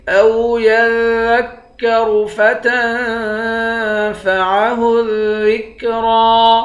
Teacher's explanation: ہا کو ذال کے ساتھ ملا کر پڑھیں گے. ذال کو کاف کے ساتھ ملا کر آخر میں را ہے، را کو موٹا پڑھیں گے.